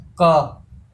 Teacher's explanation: आपका उच्चारण स्थान कंठ से होता है